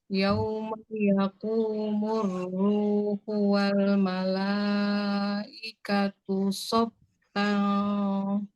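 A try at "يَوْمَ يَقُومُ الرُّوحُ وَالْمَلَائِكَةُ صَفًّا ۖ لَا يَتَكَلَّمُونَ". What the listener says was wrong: bukan sofang, sofal masuk ke lam. Harusnya gini, yauma yaqumur ruhu wal malaikatu soffal la yatakallamun.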